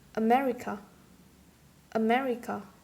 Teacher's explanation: the last one is the anti-penultimate or third last syllable